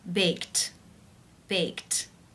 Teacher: the ed is pronounced t, unvoiced with the t sound